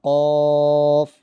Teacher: یہ موٹا ہوتا ہے دو نقطوں والا، قاف، حلق سے نکلتا ہے